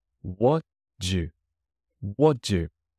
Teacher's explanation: The T at the end of what never appears.